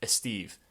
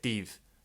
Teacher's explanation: in some Spanish dialects they might drop the S